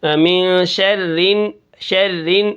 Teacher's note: را کے نیچے زیر ہے تو را کو ہم کیا کریں گے، باریک پڑھیں گے